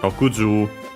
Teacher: accented, so can stay the accent only on the first mora, on the ju itself, not on the long vowel · the 6, Rokuju, is one of those that keeps the accent of Ju.